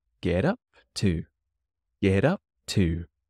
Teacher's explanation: What did you get up to? But because it's get and it has the T, it likes to change to a D, so get up to.